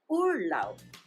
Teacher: the B at the end of the word is pronounced as P